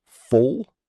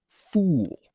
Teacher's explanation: Full has a short oo sound, like in put, and fool has a long oo sound, like in moon.